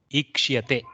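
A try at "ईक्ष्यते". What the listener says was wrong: No, there is no ikara. See, Ikshiyate.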